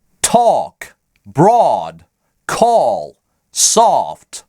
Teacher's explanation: Тут Америка разделилась пополам. Половина американцев, преимущественно на востоке США, произносят следующие слова со звуком О. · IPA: /ɔ/